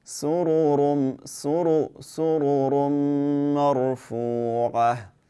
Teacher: When ra has a dhamma, just like when it has a fatha, we will make it heavy